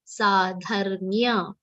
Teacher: Dha is followed by half ra, half ma, and a complete ya sound.